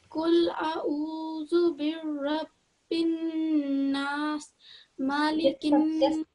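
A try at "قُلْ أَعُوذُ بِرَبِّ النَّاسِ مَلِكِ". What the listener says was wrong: So this sounded like you made a shadda on the ra. Don't. I think it sounded like Qul a'udhu birabbil, but you have to say it gently. Qul a'udhu birabbil.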